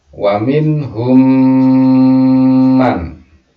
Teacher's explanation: Mim mati ketemu dengan mim. Ini idgham mimi atau idgham mutamatsilain nama lainnya.